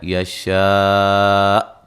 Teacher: وقف کی صورت میں حمزہ کی بھی تھوڑی سی آواز آئے گی، حمزہ ساکن ہوگا نا، وَمَن یشرک نون ساکن کا ادغام مع الغنہ ہے، را کو باریک پڑھیں گے۔ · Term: مد واجب